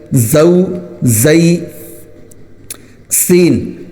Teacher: زا دانت ملا کر سختی کے ساتھ زا کو نکالنا ہے